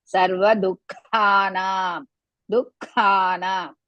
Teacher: Du is Rasva. Kha, Mahaprana and Dirgha. And Ha comes in between. Nam. Na is Dirgha.